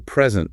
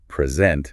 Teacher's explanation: If you stress the first syllable, present, it means a gift. But if you stress the second syllable, present, it means to show something. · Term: word stress